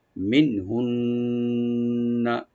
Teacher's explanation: মিন হুন্না মানে প্রথম নুন সাকিন এখানে জাহার হবে, গুন্না হবে না, মাঝখানে যে নুন সাকিন আছে। আর লাস্টে যে তাজদিদ ওয়ালা নুন এখানে গুন্না হবে, মানে ওয়াজিব গুন্না